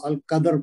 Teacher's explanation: لیلۃ القدر میں لئی میں پھر آ رہا ہے یائے لین آ رہا ہے، اور القدر میں پھر ویسے ہی پڑھیں گے، دال پہ ساکن ہے کلکلا کریں گے، اور را پہ یہاں چونکہ رکیں گے تو را کو ساکن کر دیں گے، تو القدر پڑھیں گے، را موٹی پڑھیں گے